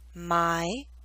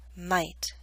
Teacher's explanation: The Y in my is longer because it's an open sound. T is a voiceless consonant.